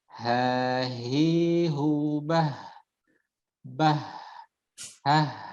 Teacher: untuk H ketika sukun, maka sedikit dialirkan nafas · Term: huruf H